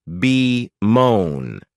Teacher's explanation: this verb has two syllables with the stress on that second syllable